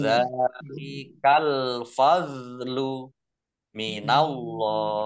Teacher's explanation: Allahnya dibaca tebal karena harokat di depannya fathah.